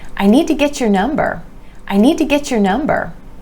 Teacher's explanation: the Y sound is changing to that CH, chur. Getcher.